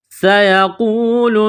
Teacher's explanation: یہاں واو ساکن سے پہلے پیش ہے تو حروف مدہ واو ہے، ایک الف کے برابر اس کو کھینچنا ہے · سین میں سیٹی کی آواز پیدا کریں گے، سین کو دبانا ہے تشدید کی وجہ سے